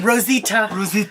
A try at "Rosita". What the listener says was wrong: No, you have to roll your tongue.